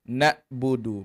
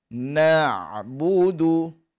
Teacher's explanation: na'budu ha lunak tidak ada dalam hidung tidak bunyi sengau ada bunyi lunak okey tidak keras seperti bunyi hamzah tu pada huruf ain